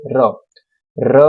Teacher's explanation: ર બોલે એટલે તરત પ્રકંપ આખું કંપન ઉત્પન્ન થાય છે જીભમાં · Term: પ્રકંપી વ્યંજન